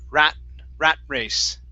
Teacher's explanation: with rat I'm going to use a stop T